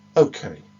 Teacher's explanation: the healthcare professional indicates the end of the subsection about occupation with this falling intonation